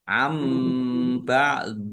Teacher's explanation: bacaan iqlab dibaca membalik nunnya dibaca mim dulu · Am ba'di, nun sukun bertemu dengan huruf ba, bacaan iklab dibaca membalik, nunnya dibaca mim dulu, ada tanda mim kecil berdiri. Am, ya, bibirnya apa menutup.